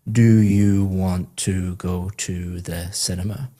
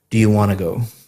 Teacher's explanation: Want to go sounds like one word, want to go, because you're connecting all the speech up. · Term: connected speech